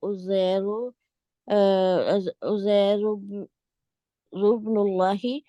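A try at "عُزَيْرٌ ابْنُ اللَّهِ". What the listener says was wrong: ये जो नून लगा हुआ है ना, इसको निब्नुल्लाह ही पढ़ेंगे। ये उज़ैरुन था ना, तो ये क्या हुआ, यहाँ पे तनवीन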